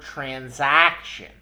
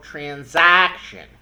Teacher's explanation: It's the a part that gets the stress, the a vowel. We emphasize that a vowel.